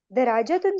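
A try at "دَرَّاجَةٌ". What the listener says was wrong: دراجتن نہیں کہیں گے، دراجتن، یہ شد ہے یہاں، شد.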